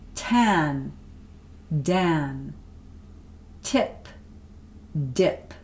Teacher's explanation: voiceless voiced alveolar stops tongue is touching behind the teeth on that alveolar Ridge